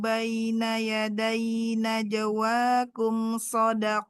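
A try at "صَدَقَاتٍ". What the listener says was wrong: Naikkan lagi qafnya. Sodakot.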